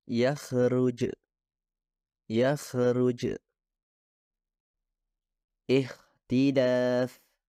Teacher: Sekarang, mari beralih ke suara kha, yang merupakan gerakan yang sama seperti ghain dengan sedikit perbedaan. Jadi, kha dihasilkan ketika akar lidah diangkat ke atas hingga hampir menyentuh langit-langit lunak. Kha juga merupakan suara kontinu atau terus-menerus yang maksudnya dapat diperpanjang selama yang Anda inginkan, sehingga tidak ada sentuhan antara dua organ tersebut. · suara kha, suara tanpa getaran, yang artinya dihasilkan dengan mendorong udara melalui celah yang terbentuk di antara keduanya, yaitu akar lidah dan langit-langit lunak